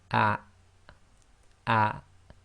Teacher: the hamza acts as the glottal stop in Arabic, and you should feel a slight blocking of the bottom of your throat